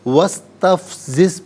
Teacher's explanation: واو پر زبر ہے، اسے سین ساکن کے ساتھ ملائیں گے، درمیان میں سے الف یعنی حمزہ کو حذف کیا جائے گا